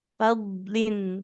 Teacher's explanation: Kalau fadlin nanti seperti mau ke huruf dal. Makrotnya di tepi lidah kita ya, ke gigi geraham. Fadlin, tepi kiri atau kanan. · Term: huruf dot